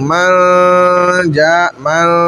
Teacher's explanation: غنہ ہوگا، ناک میں آواز جائے گی، ٹھہرے گی بھی، لیکن چھپ کر، آواز غنے کی صحیح ظاہر نہیں کہی جائے گی، چھپائی جائے گی۔ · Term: غنہ مال اخفا